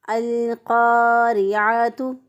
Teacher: را کے نیچے زیر ہے، باریک پڑا، قاف موٹا پڑا، عین کو رگڑ کھاتی ہوئی سانس میں گلے کے درمیان سے ادا کیا